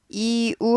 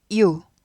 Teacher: 이우 하면 두 박자인데 얘는 이우가 아니라 합쳐서 유가 되잖아요. 반박자예요.